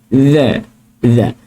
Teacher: Okey, hujung lidah dikeluarkan sedikit. Okey, bermakna hujung lidah tu keluarkan sikit. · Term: huruf dhal